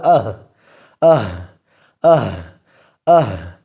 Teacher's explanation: اس میں سانس جاری ہے لیکن پستی آ رہی ہے